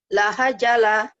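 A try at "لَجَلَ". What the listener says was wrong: Enak aja. Lahajala. Itu jim. La-jala.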